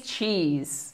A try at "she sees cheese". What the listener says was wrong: Si, she. Ah, en fait, le but, c'est pas de faire un se sur le premier son. C'est le premier son qui est capital pour bien prononcer. She. Cheese. Che. Cheese. Cheese. She sees cheese.